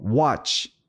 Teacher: 그래서 watch 그 입을 우 내밀지 않고 시작하면 watch 요렇게 되고 watch 입을 내밀고 거기서 이제 이 내밀었던 입이 퍼지면서 나는 소리가 W가 된다는 거죠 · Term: W 소리